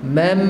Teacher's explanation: Mam ini gunnah yang sempurna lah sebab dia ada sabdu tu, tasydid tu.